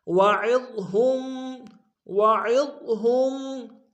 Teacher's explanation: عین کو ضاد کے سامنے لائیں گے، ضاد کو موٹا ادا کریں گے